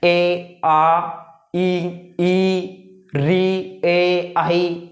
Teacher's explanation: ऐसे स्वर जिनका उच्चारण करते समय होठ की स्थिति गोलाकार नहीं होती है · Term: आवर्तमुखी स्वर